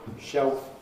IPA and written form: ʃeof (shelf)